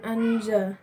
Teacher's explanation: termasuk ikhfa karena huruf nun sukun bertemu dengan huruf zai. Cara membacanya samar dan dengan dengung.